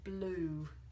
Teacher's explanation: it's actually not a strong u sound it's more of an oo sound